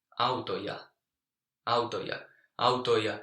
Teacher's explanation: And Finnish doesn't like this. So instead of having the three vowels there together, the I changes to J.